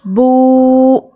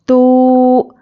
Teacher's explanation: دیکھیے، کھڑا زبر، کھڑی زیر اور الٹا پیش، ان تینوں کو حروف مدہ کی طرح کھینچ کر پڑھنا چاہیے۔ الٹا پیش کو ایک الف کے برابر کھینچ کر پڑھیں گے۔ جتنا ہم ایک انگلی کھول کر بند کرنے جتنا ٹائم لگتا ہے اتنی دیر کھینچ کر پڑھیں گے، نہ زیادہ کھینچنا ہے نہ کم کھینچنا ہے، ٹھیک ہے؟